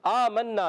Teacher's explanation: آمنا، میم پر زبر، میم کو نون سے ملانا ہے. نون مشدد، نون مشدد میں ہمیشہ ایک الف کا غنہ ہوتا ہے